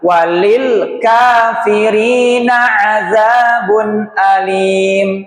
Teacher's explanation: Jangan dipantul. Lam itu bukan huruf qalqalah.